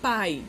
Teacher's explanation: O ditongo, eu vou ter uma vogal e uma semivogal na mesma sílaba. Pai, não faz separação.